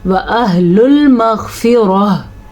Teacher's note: व अहलुल मग़फ़िरा, ग़ैन जो है पुर पढ़ा जाएगा और रॉ को भी हम पुर पढ़ेंगे क्योंकि रॉ के ऊपर ज़बर है। वक्फ आने की वजह से गोल ता हा बन जाएगी और इसकी आवाज़ भी आनी चाहिए